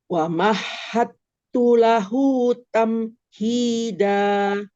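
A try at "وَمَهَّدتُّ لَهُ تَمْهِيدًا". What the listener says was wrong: Oke, tepat berikutnya.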